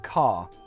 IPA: kɑː